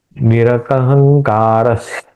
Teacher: निरहंकार यहां पे निरकहंकारस ये यहां डबल स आएगा। स मैंने एक्सटेंड किया क्योंकि ये विसर्ग और ये आने वाला स उसको मिलाने के लिए